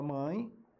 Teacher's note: palavra mãe a letra é e mas o som é i